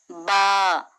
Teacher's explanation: बा मखरजेज शफवी इसका मखरज है दोनों हंठों के मिलने से बा निकलता है। ब दोनों हंठों के गीले हिस्से से अदा होता है। · با، مخرج شفوی، اس کا مخرج ہے دونوں ہونٹوں کے ملنے سے با نکلتا ہے۔ با دونوں ہونٹوں کے گیلے حصے سے ادا ہوتا ہے۔